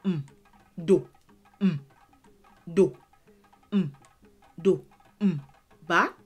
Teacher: It looks like mi, but because it is the only letter in this syllable and it has now become a vowel, you say m, but you say it according to the tone that applies.